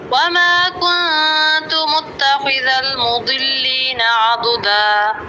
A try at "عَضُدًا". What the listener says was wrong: आइन बारीक रखे, आबुदा आबुदा ओ नहीं करना, आ आइन ज़बर आइन ज़बर आ ओ ऊपर ज़ुबान नहीं उठानी। आइन ज़बर बिल्कुल साफ़ आवाज़, इधर उधर की कोई आवाज़ नहीं, ऐसे नहीं करना। आइन ज़बर ये आवाज़ है, 3 दफ़ा।